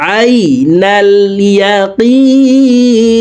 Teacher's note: আইনকে হলকের মধ্যখান থেকে উচ্চারণ করব